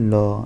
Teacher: मुख बीच में बंद हो जाता है और हवा दोनों से निकलती है जैसे ल ल में मुख दोनों और से बंद हो जाएगा